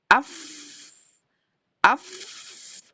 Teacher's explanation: Fa itu mahrajnya adalah di badan bibir bawah bertemu dengan ujung gigi seri bagian atas. Af. Badan bibir bawah itu di dalam ya enggak kelihatan. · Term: huruf fa